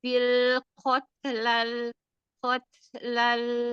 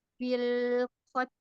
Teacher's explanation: Jadi tidak memantul karena tidak ada qalqalah.